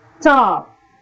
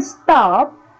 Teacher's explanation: The word stop is pronounced with no puff of air